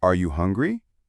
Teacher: Feel your pitch rise at the end. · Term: rising inonation